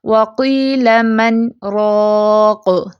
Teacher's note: ہم سمال پاز لیتے ہیں اور سانس نہیں توڑتے، تو کیسے پڑھتے ہیں ہم اسے، وقیل من راق، ٹھیک ہے، اس کو ہم مر راق تو نہیں پڑھتے نا۔ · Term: سکتہ